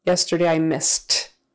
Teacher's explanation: The S is unvoiced, so the ED becomes a T,